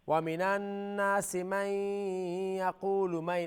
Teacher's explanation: After noon sakin, there's ya, idgham. Idgham ghunna.